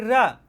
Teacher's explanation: जिसके उच्चारण में जीभ तालु से लुढ़क कर स्पर्श करे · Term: लुंठित